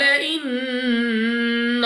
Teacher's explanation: نون مشدد غنہ کر کے پڑھیں گے